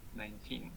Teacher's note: the word 19 in isolation has stress on the second syllable